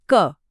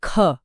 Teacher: अल्पप्राण क बोलते वक्त हवा का एक बहुत हल्का सा झोंका लगता है। जबकि महाप्राण ख में एक जोरदार ऊर्जा या हवा बाहर निकलती है।